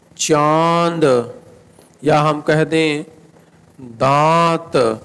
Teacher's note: इसका उच्चारण करते समय वायु मुख से कम नाक से अधिक बाहर निकलती है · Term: अनुनासिक